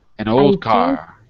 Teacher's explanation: That means two or more consonants put together. We often drop the D sound. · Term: dropping the D